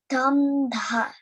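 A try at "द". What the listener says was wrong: So now I'm hearing a little bit of an air. I'm hearing aspiration like dham, dha. Say it without the air, like the, da, di, do, dri, da, de, dai, do, do, dang, daha.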